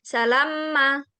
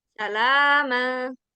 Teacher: Oke, di sini ada mad thobi'i. Jadi panjang dulu lamnya kemudian langsung mim. Dia enggak ditahan dulu. Bukan salamma.